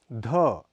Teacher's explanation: यह महाप्राण घोष ध्वनि है इसका उच्चारण भी त वर्ग के उपयुक्त वर्णों की भांति दांत